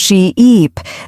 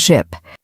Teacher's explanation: Say sheep and stretch the E sound she-eep, then say ship with a short sound ship. That's a great tip. · The difference is in how long you hold the vowel sound.